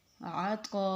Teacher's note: عین کو ہم نے حلق سے پڑھنا ہے اور طا کو پر کر کے اور مد کے ساتھ یعنی کہ لمبا کر کے